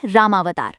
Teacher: जब ये दोनों शब्द जुड़ते हैं तो राम का अ और अवतार का अ मिलकर आ की ध्वनि देते हैं और नया शब्द बनता है रामावतार। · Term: संधि